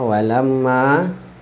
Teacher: Walamma ma ada sabdu kat sini wajibul ghunnah, wajib dengung, bukan berdengung, wajib dengung.